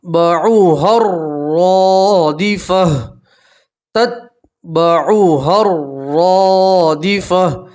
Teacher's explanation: دیکھیے را کے اوپر زبر ہے اور الف مدہ ہے، اس لیے آپ ایک الف کے برابر کھینچیں گے اور گول تا کے اوپر وقف کریں گے تو ہا سے بدلیں گے، ٹھیک ہے۔